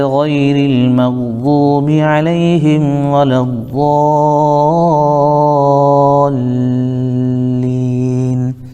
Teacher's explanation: یہاں پر کم از کم ہمیں 3 الف کے برابر مد کھینچنا ہے، جیسے ولا الضالین، لام کے اوپر بھی تھوڑا رکنا ہے، چونکہ لام تشدید ہے اور تشدید والے حرف کو سختی کے ساتھ پڑھا جاتا ہے